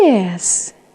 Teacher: lên cao rồi xuống thấp